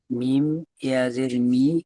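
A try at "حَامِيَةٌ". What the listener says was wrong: মিম ইয়াজের নয়, মিম জের মি।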